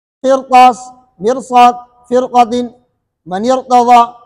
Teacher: اب دیکھو قرطاس، مرصاد، فرقۃ، من ارتضی، اس کے اندر را موٹی ہے۔ مرصاد، قرطاس اور فرقۃ کے اندر را اس لیے موٹی ہے کہ را ساکنہ سے پہلے تو زیر ہے